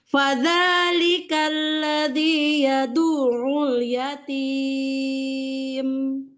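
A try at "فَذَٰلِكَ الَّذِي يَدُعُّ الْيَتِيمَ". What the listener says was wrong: Yatimnya agak turun datar gitu. Jadi jangan diangkat. Fadzalikal ladzi yad'ul yatim.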